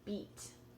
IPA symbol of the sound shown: i: